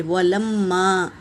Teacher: میم پر تشدید ہے، اس کا غنہ ہوگا اور الف سے پہلے زبر الف مدہ، غنہ کرتے ہوئے الف مدہ ادا کریں گے، اور جیم حرکت ہے، اس پر مد ہے، مد متصل، تو اسے 3 سے 4 الف کے مقدار کھینچ کر پڑھیں گے میری بہنوں۔